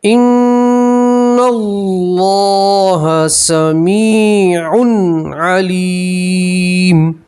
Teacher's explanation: یہاں تنوین کا اظہار ہے، آپ یہاں گننا نہیں کریں گے